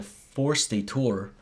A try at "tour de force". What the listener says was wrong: Tour de force. Yeah, you said it like you pronounced it. You just did it backwards.